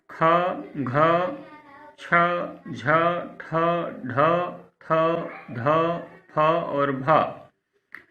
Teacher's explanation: जिन वर्णों के उच्चारण में प्राणवायु अधिक मात्रा में निकलती है वे महाप्राण कहलाते हैं।